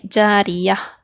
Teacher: جاریتن ہے، اگر ہم یہاں پر آیت آ گئے تو ہم اس کو کیسے پڑھیں گے، کیسے وقف کریں گے، جاریہ پڑھیں گے، جاریہ، آخری حرف کو ہاں بنا دیں گے، تا کو ہاں سے بدل کر وقف کریں گے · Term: ہائے ساکنہ